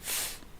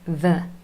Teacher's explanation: And the only difference here really is that f is unvoiced, no vibration from your vocal cords, and v is voiced